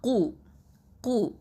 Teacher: கீழ் அதாவது நாவிலேருந்து வரக்கூடிய எழுத்து, அடி நாவிலேருந்து வரக்கூடிய எழுத்து. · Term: அக்கசல் லிசான்